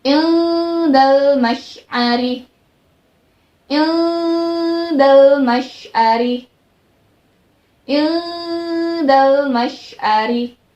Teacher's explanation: Ketika mengucapkan huruf da, lidahnya, ujung lidah ini berada di gusi gigi bawah ya. Ya, tapi tetap di dalam seperti akan membentuk huruf makhraj da, tapi huruf makhraj da-nya berada di atas, di gusi gigi atas, tapi dari bawah. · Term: ikhfa